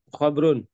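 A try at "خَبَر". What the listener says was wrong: bukan khob, bukan khobrun ya, khobar.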